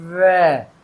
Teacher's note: अगर आप ध्यान से आवाज समझें इसको, तो वह में क्या हुआ, दांत मेरे कहाँ पे लग रहे हैं, ओंठ पे लग रहे हैं। वह ऊपर के दांत नीचे के ओंठ पे लग रहे हैं, यानी कि ये कहाँ बोला जाएगा, दंत प्लस ओष्ठ